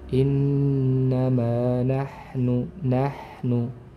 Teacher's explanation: Mengalirnya aliran udara ketika mengucapkan huruf ha ini, dan mengalirnya pula aliran suara. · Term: sifat hamas dan rokhwah